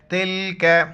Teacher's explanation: چھوٹی کاف باریک پڑھیں گے